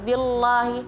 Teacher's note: lamnya masih terdengar tebal